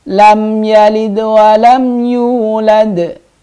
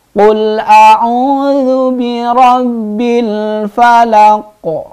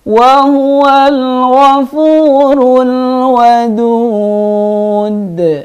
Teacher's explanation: qalqalah kubra memantulnya dengan jelas atau dengan keras